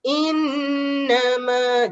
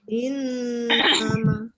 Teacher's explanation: n-nya tu dia akan keluar dari hidung ya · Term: dengung